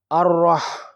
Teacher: را مشدد پر زبر ہے، را شبہ مستعلیہ حرف ہے، اس پر جب اوپر کی علامت یعنی زبر یا پیش وغیرہ ہوں تو یہ موٹا پڑھا جاتا ہے۔ ہا مجزوم اپنے سے پہلے حرف یعنی را مشدد سے مل کر پڑھنی ہے